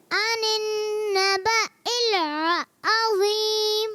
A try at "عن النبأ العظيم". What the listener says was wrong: اچھا لام کو ہلانا بھی نہیں ہے. عین شروع میں عین جو ہے اس کی ادائیگی بھی کلیئر کرنی ہے.